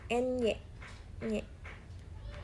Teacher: Yang keempat itu ada antara ujung lidah dan langit-langit keras, hasilnya bunyi Ny